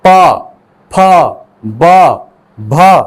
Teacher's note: ठीक, प वर्ग का उच्चारण स्थल देखें तो प का उच्चारण स्थल, इसमें आपको जीभ की आवश्यकता नहीं होती है। इसमें दो होंठ जो है, अपर लिप्स लोअर लिप, ये टच करते हैं और फिर इन वर्णों का उच्चारण होता है। प, फ, ब, भ, है ना, इसीलिए इन पांचों वर्णों को ओष्ठ्य वर्ण कहा जाता है।